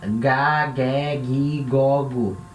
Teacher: Letra gama vai ter som de G, mas sempre o som de G da garganta.